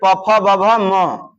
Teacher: ओष्ठ होगा फ का उच्चारण स्थान